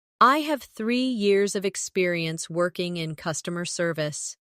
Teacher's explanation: Emphasize 3 years and customer service to highlight your strengths.